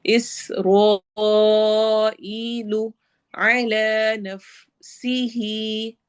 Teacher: सीन में सिटी वाली आवाज़ होगी, रॉ को हैवी करना है और ई पे भी या मद्दा करनी है।